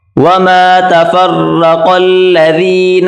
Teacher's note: را کو موٹا کریں اور قاف کو بھی موٹا کر کے پڑھیں گے